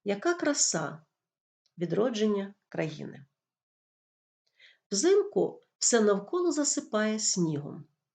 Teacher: в кінці речення інтонація понижується це є інтонація завершення речення · при читанні простого речення голос спершу підвищується робиться невеличка пауза а в кінці речення голос спадає